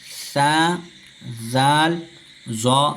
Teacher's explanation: زبان کا کنارہ اور سامنے کے جو دانت بڑے ان کا کنارہ لگ کر ثا ذال ذا ادا ہوتا ہے